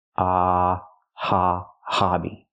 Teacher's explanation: use a short a sound like hot and stop it's open and relaxed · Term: short ah sound